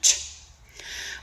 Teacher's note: this is an unvoiced sound, meaning that there's no sound vibrations made during this sound production.